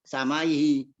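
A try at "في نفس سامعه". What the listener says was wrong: Sami bukan sama. Samiun isim fa'ilun samiun gitu. samihi.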